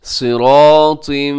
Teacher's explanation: सिरा में सौद भी मोटा है, रा भी मोटा है, अलिफ भी मोटा है और ता भी मोटा पढ़ा जाएगा।